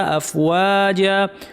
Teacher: আফ বলার সময় ফায়ের আওয়াজ বাতাস দুইটাই যেন থাকে, সাবলীল ফ্যাসফ্যাসে আওয়াজ। আফ ওয়া কমপ্লিট করে, হ্যাঁ ও না, অনেকে ভুলে বলেন আফ যা, ওকে ভারী করা যাবে না, ওয়া পাতলা থাকবে।